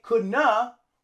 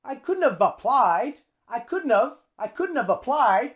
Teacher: We use the V because we want to use the V to link with the A in applied. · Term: couldn't've